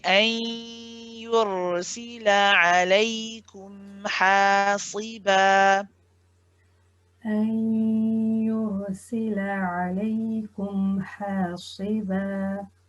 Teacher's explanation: you are pronouncing the ya, and at the same time you've got the sound traveling through your nose for the noon. And that's what makes the noon incomplete. · when we have noon sakin followed by a ya, we call this the idgham naqis, the incomplete merge. So this is the one where you are pronouncing the ya, and at the same time you've got the sound traveling through your nose for the noon. · And that's what makes the noon incomplete. Some of the noon happens to still be there while some of it has gone.